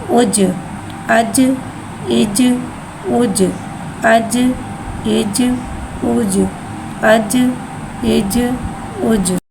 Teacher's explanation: जीम के बाद साकिन है, साकिन को पहले वाले से मिला के पढ़ेंगे। जीम के बाद साकिन है, लिहाजा इसमें कलकला हो रहा है, कलकला में आवाज़ लौटेगी। हमज़ा जीम पेश उज।